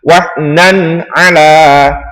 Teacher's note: Maka dinamakan bacaan idhar halqi. Cara membacanya adalah jelas di mulut. Contohnya wahnan ala, tidak boleh berdengung.